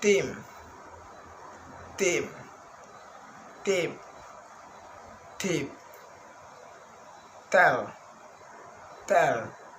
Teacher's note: Next, voiceless alveolar stop sound team, team, tip, tip, tell, tell.